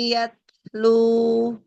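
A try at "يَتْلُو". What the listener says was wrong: Jadi yang dialirkan ke hidung jangan lebih banyak. juga dari mulut. ini kebanyakan ke hidung jadi berdenging. Tui, tui, tui. Jangan. Tui, tui. Tetap ada ke hidung, tapi tetap dari mulut juga jelas gitu ya. Iya, kalau idgham biguna.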